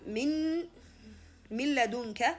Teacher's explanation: Here the noon sound completely disappeared. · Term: idgham